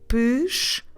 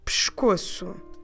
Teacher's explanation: dropping completely that letter E on the first syllable